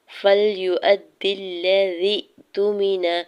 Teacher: فَلْيُؤَدِّ الَّذِي یہاں پہ حمزہ کے زبر کو دال مشدد کے ساتھ ملاتے ہوئے پڑھنا ہے اور دال کی زیر کو لام مشدد کے ساتھ ملاتے ہوئے پڑھیں گے. یا ساکن اور دال کی زیر کو حمزہ ساکن کے ساتھ ملاتے ہوئے جھٹکا دیں گے